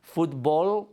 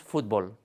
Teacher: they would say football would have a lateralized or velarized L, because that's how the L's in English are made at the end of the syllable